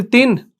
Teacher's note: तनवीन और नून साकिन की जो आवाज होती है ना, वो यकसा होती है।